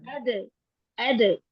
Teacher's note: अब दाल जी में क्या मैम है, कलकला भी है, क्योंकि इसमें शिद्दा पाई जाती है, और शिद्दा जो है वो चूंकि जब हम अद करते हैं, तो मखरिज जो है वो क्लोज हो जाता है, और आवाज निकल नहीं पाती बाहर